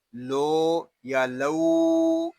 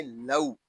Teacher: وَلَوْ شَاءَ اللَّهُ، یہاں واو لین ہوگا. حرف لین کو بغیر کھینچے بغیر جھٹکا دیے نرمی سے معروف پڑھتے ہیں. اس کو لو یا لو اس طرح نہیں پڑھیں گے، اس کو پڑھیں گے لو.